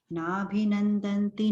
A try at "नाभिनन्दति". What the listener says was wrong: नाभिनन्दति, नंदन्ति नहीं है, नंदति। और नंदती है, नंदंती नहीं है, नंदती।